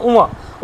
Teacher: ক খ গ ঘ ঙ, এই যে উমা, একটা সাথে হালকা থাকছে, সাথে হচ্ছে ম, উমা, এইভাবে উচ্চারণ করছে। মটাও পুরো উচ্চারণ করছি না, উটাও পুরো উচ্চারণ করছি না, দুটোই ভেতরে উচ্চারণ করছি নাকের সাথে, ওই জন্য হয়ে গেল উমা।